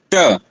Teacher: उच्चारण करने पर मूर्धा से स्पर्श हो रहा है जीवा का